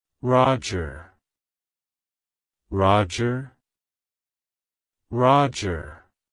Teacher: emphasize the first syllable R OJ and then quickly move to the sound at the